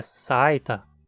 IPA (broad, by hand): saɪ̯tɐ